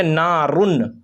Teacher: اور تنوین کے بعد، یعنی 2 زبر تنوین کے بعد، یا 2 زیر تنوین کے بعد، یا 2 پیش تنوین کے بعد، 2 پیش تنوین کے بعد اگر حروف حلقی کے 6 حرفوں میں سے کوئی بھی حرف آ جائے تو اس نون کو ظاہر کر کے بلا غنہ کے جلد پڑھیں گے، اور اس کو اظہار کہتے ہیں۔